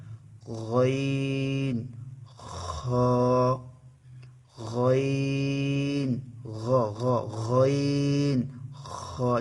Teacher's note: 3 নম্বর মাখরাজ, কণ্ঠনালীর শেষ ভাগ হইতে উচ্চারিত হয়।